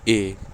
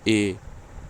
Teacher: बोलते टाइम आपका मुंह जब आधा खुला रहेगा उसको अर्धसंवृत कहेंगे। जैसे बोलिए ए, तो आपका देखिए मुंह क्या है, आधा खुल रहा है, ए।